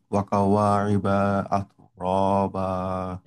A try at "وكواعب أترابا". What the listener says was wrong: এখানে শেষে গিয়ে টানের মতো হয়ে যাচ্ছে, টান হওয়া যাবে না। وكواعب أترابا.